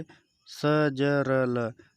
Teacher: वत्स दांतों के मूल से स, ज, र, ल